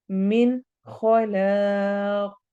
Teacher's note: मिन में नून को वाजिया पढ़ेंगे, इजहार हो रहा है। खौ हरूफ हलकी, ला अलिफ मद्दा और आखिर में कौफ को मोटा पढ़ना है और कलकला करना है।